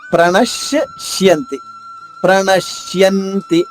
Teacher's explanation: శలోని శ ద్విత్వం చేసుకుంటూ రెండు శాలు